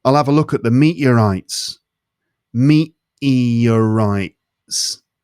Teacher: sometimes it's like the t just disappears completely and other times it get gets replaced by a sort of an uh sound